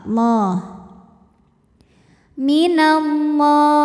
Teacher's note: Lam jalalah dibaca secara tafkhim sebab huruf sebelumnya berbaris fathah, maka dibacanya tebal, Allah. Minallah.